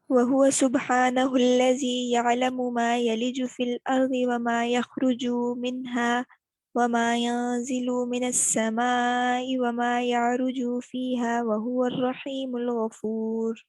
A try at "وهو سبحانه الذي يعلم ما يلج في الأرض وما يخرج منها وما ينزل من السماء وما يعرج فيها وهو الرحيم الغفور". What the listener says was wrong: مجھے کہیں کہیں لگ رہا ہے یا مد اصلی ہو رہی ہے، جیسے یارجو میں نا صرف گزار دینا یارجو، بس کچھ سننے میں مجھے لگا کہ جیسے مد اصلی ہو رہی ہے. اس کو ذرا سے چیک کر لیجیے گا، باقی ٹھیک ہے ماشاءاللہ.